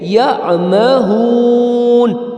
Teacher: یہ ہا جو ہے یہ سینے سے نکلے گی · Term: دو چشمی ہا